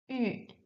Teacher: closing and protruding your lips. Yu, yu, and making a sound between the e and the u. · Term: ü sound